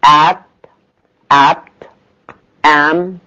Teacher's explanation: Ah, short front open, as in that, at.